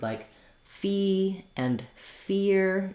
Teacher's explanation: think about a word like fee and fear, staying bright on that E sound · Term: tense E